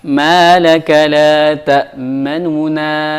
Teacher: Nun yang pertama kita tidak baca jelas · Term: ar-raum